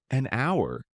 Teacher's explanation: It starts with an H, but we don't pronounce it.